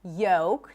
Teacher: So the L is not pronounced in words like yolk